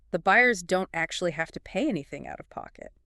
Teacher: I hear the stress on buyers, pay, anything, and pocket. highlighting who, what action, what amount, and where from.